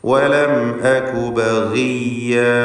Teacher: ബഗിയ എന്ന് പറയുമ്പോൾ ഗൈന് തഫ്ഖീം ചെയ്യേണ്ട ഇസ്തിഅലാഹിൻ്റെ ഹർഫാണ്. എന്നാൽ കസ്റ ഉള്ളതുകൊണ്ട് കുറഞ്ഞ തഫ്ഖീം മാത്രമാണ് നൽകുക